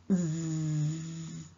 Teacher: Sound is articulated with the tip and front of the tongue close to the teeth ridge. The air escapes between the tongue and the teeth ridge. Here, the vocal cord vibrates. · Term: zzz sound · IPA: /z/